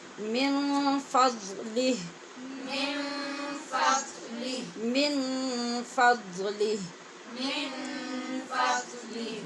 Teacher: من کے نون پہ اخفا ہے، اخفاء حقیقی، کیونکہ آگے فا حروف اخفا میں سے ہے۔